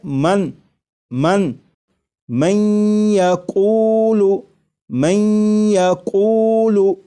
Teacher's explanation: نون ساکن کا یا میں ادغام بھی ہو رہا ہے، اور ادغام اس طرح ہو رہا ہے کہ غنہ کے ساتھ